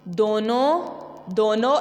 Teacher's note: نون غنہ میں آواز نون کی طرح واضح نہیں ہوتی، بلکہ آواز جو ہوتی ہے ناک میں چھپ جاتی ہے